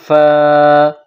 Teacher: سامنے والے اوپر کے دانت جب نچلے ہونٹ سے ملائیں گے اور زور لگائیں گے فا کو ادا کریں گے